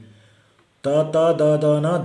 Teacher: ತ ತ ದ ದನ ದಂತಾಹ, ಟೀತ್, ಅಂದರೆ ಅವುಗಳನ್ನು ಪ್ರೊನೌನ್ಸ್ ಮಾಡುವಾಗ ಹಲ್ಲಿಗೆ ನಾಲಿಗೆ ಹೋಗಿ ಟಚ್ ಆಗುತ್ತೆ, ಅದಕ್ಕೆ ದಂತಾಹ ಅಂತ ಕರಿತೀವಿ.